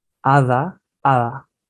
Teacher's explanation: con el tema de la consonante d cuando está entre dos vocales suena también muy relajado Por ejemplo si yo digo Ada hada entonces suena muy ligero